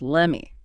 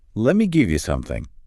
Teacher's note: Americans very often drop that T completely. It just disappears. So let me becomes lemmy. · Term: dropping